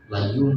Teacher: Ada yang baca layum benar-benar mim. Jadi ditutup layum itu boleh. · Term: iqlab